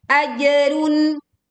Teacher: jim sukun dibaca memantul dengan suara yang miring dan kuat